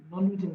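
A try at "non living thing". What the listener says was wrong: हाँ, नॉन लिविंग, साफ बोलो ना, आधा बोलते हो आधा मुंह के अंदर रख लेते हो, पूरा बोलो, बाहर आने दो आवाज को। आवाज को जितना बाहर आने दोगे सामने वाला सुनेगा। आधा बोलते हो आधा अंदर रख लेते हो।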